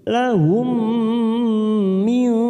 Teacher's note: mim sukun bertemu mim idgham mimi kita tekan 3 ketuk siap masuk ke huruf mim.